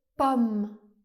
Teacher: la lettre O fait aussi, le son /ɔ/ ouvert par exemple dans le mot pomme